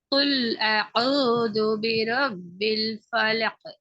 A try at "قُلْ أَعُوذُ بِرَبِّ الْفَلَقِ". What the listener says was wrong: இதுலயும் காஃப கலக்கணுமே. படிச்சிட்டீங்க. காஃப் கலக்க நீ கலக்குறீங்க. ஆனால் அது உங்களுக்குள்ள மாத்திரம் சுருக்கப்படுது. பிறகு உங்களோட உச்சரிப்போட மாத்திரம் நிக்குது. அப்படியே இல்ல. உங்களோட சவுண்ட் ஏணி எழுத்துக்கள் எப்படி வெளியால் தெளிவாக விளங்குதோ அந்த அமைப்புல அந்த காஃபினுடைய கலக்குதல் அழுத்தம் தெளிவாக விளங்கணும். அல்லது பிறகு أعوذ برب الفلق.